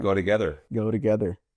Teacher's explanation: So the T there in the middle becomes ra ra ra, sound like a flap T, go together.